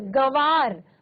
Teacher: इनका उच्चारण मुख और नासिक दोनों से होता है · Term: अनुनासिक